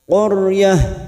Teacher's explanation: huruf ra sukun yang sebelumnya ada harokat fathah, namanya ra tafkim, ra yang dibaca tebal. Qaryah dengan posisi bibir kita seperti orang cemberut.